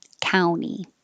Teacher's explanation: county with a T or county without a T, but the vowel is ow, county. 49, country.